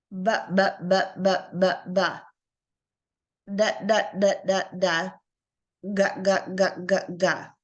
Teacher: if you notice when we say b d and g we feel that vibration on our throat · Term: voice consonant, voiced consonant